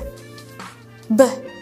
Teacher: ketika kita mengucapkan suara b, akan ada sedikit getaran. Nggak jelas, tidak begitu jelas, tapi dia tetap saja getaran.